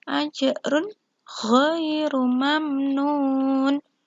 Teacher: tanwin dhamma bertemu dengan gha, maka hukum bacaannya adalah idhar halqi. Pembacaannya jelas